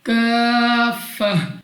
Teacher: اور تا پر 2 زبر کی تنوین ہے. اگر آپ یہاں پہ وقف کرتے ہیں تو آپ نے اس کو گول ہا سے بدل دینا ہوگا